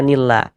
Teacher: Sebelum lafaz Allah sebelah sininya ada ini ada tanda baca kasrah ini ada harakat kasrah ini baris miring di bawah hurufnya ya di sini ada lafaz Allah sebelah sininya ada harakat kasrah maka lafaz Allah huruf lam jalalahnya dibaca tarkik dibaca tipis